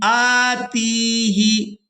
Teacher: تا کو یا ساکن کے ساتھ ملاتے ہوئے کھینچ کر ادا کریں گے